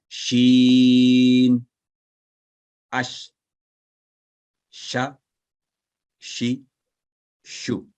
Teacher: जबान का दरमियानी हिस्सा ऊपर तालू से लगाकर ये हरफ अदा होता है।